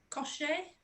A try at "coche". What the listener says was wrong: It's not a sh. It's a ch sound. Coche. Coche.